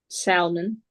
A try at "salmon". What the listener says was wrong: L is not pronounced. So when we have L and M, L is not pronounced in some cases, but not all of them.